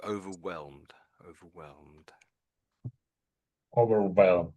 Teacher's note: I suppose you could say the H is silent, really, I would say.